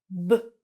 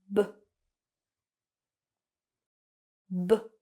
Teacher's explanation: this B sound is voiced, which means that you're going to use your voice. So when you produce the sound, you are going to feel a vibration in your throat. And what you're going to do is basically push out the air with your lips. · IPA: /b/